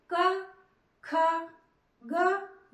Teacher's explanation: जब हम क ख ग घ बोल रहे हैं तो हमारा ये कंठ ये हिस्सा सक्रिय होता है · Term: क वर्ग